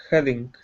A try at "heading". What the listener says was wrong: Good.